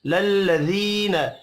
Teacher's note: مدہ کو ایک الف کے برابر کھینچ کر پڑھیں گے للذین یا مدہ ہے ایک الف کے برابر کھینچ کر پڑھیں گے